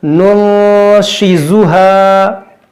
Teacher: देखो, यहाँ भी नून सकीन के बाद शीन एक हुरूफ़-ए-इख़्फ़ा है। हम यहां इख्फा करेंगे, यानी हम गुन्नाह करेंगे।